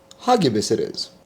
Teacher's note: The name Hagibis is pronounced Ha-Gay-Bis, with the emphasis on the second syllable and a hard G sound like in go